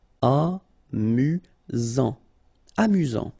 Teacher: Amusant, final T not pronounced. You've got only one S here between the vowels, so it's really this Z sound